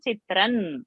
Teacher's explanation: Because next word is na. So anuswara on chitra has to become na. Toyi chitram na mandavyam.